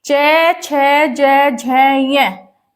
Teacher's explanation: यह कहां से आते हैं तालव्य ता लव्य तालव्य से बोले जाते हैं